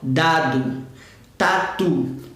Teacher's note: eles saem do mesmo posicionamento a ponta da língua no céu da boca · Se você falar dado ou a palavra tatu, você vai reparar que é a ponta da língua que pega no céu da boca